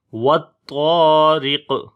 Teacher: را کو باریک پڑھیں گے، اس کے نیچے زیر ہے